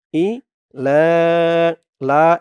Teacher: এখানে 3 আলিফ টান হবে মধ্যে মুনফাসিল